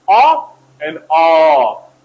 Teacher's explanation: two of them are semi-rounded one is unrounded a and a these are semi-rounded half rounded and they are back vowels at the same time LAX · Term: low back vowels